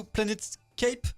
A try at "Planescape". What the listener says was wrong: Planescape, pas Planète.